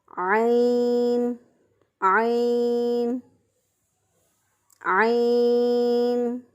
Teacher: عین کو رگڑ کھاتی ہوئی سانس میں گلے کے درمیان سے ادا کیا